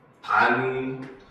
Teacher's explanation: 자, 그 다음 이제 마지막 세 번째, 이것이 다시 반니랑 요렇게 되죠. 그래서 마지막에는 니은의 영향을 받아서 디귿이 니은으로 변하는 비음화 현상이 마지막에 이렇게 일어나는